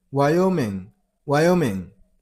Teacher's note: You got a stress on the middle syllable.